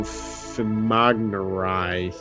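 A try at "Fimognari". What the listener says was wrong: Sorry, the G is probably silent. Sorry, Fimonari probably. The G is probably silent. Yeah, it sounded like it was like Cree or something like that.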